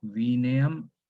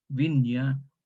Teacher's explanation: palataliza la consonante precedente. Por ejemplo, una N la transforma en ñ, una palatal ñ.